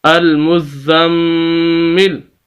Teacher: آخری حرف جو لام ہے اس کو ہم ساکن کر دیں گے تو وقف ہو جائے گا